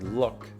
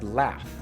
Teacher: Sometimes L is pronounced in the back of the mouth like look, and sometimes it's pronounced in the front of the mouth like laugh